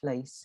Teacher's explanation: And you know, if you'd ask another phonetician, I mean, I spent time in the US with the original American editor of the Pronouncing Dictionary, and he said, "Oh, you've got a really interestingly diphthongal fleece vowel